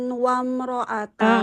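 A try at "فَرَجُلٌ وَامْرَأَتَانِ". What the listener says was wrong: Enggak farojulun. Farojulu wam farojulu. Nah, di sini dhammah tain ketemu waw idgham bi gunnah. Jadi enggak farojulun.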